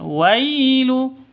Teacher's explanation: W sifat Lin lemas tidak boleh disentak tidak boleh didengungkan tidak boleh dipanjangkan